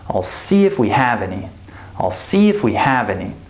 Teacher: So see and have are stressed, right? So that means the other words have the possibility to be unstressed and reduced.